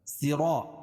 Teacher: را پر زبر ہے تو را کو پر پڑھیں گے، اور الف سے پہلے را کے اوپر زبر ہے تو الف مدہ ہو جائے گا.